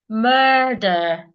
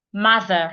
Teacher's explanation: Murder, long vowel in the first syllable. Mother, short vowel, ma, and the th, mother.